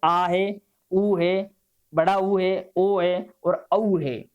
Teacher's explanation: जिन स्वरों के उच्चारण में जीवा का पीछे वाला भाग सक्रिय रहता है उसे पश्चिम स्वर कहते हैं, जैसे है आ है, ऊ है, बड़ा ऊ है, ओ है और औ है।